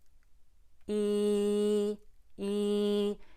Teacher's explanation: the e is like this e e and we're really gonna arch arch the tongue forward here's the tip of the tongue touching the bottom teeth and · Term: long e